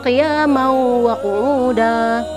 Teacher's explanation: Bacaannya qiyamau wa qu'uda. Qiyamau, tanwin bertemu dengan waw ini dibaca berdengung, diiringi dengan berdengung, seraya memasukkan huruf mim ke dalam huruf waw. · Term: idgham bil gunnah